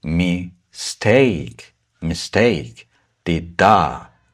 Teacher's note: By the way, the syllable after this apostrophe will be stressed. So it's steak, not me, that is stressed